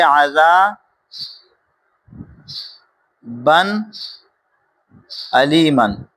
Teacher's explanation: تنوین کے بعد حروف حلقی میں سے تو اس کے اندر بھی ہم غنہ نہیں کریں گے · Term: اظہار